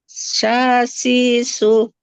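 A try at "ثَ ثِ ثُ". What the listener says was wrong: Nah, jangan sa, itu nanti jadi sin. Ujung lidahnya tempelkan ke ujung gigi seri atas. Sa, keluar sedikit dia lidahnya. Sa.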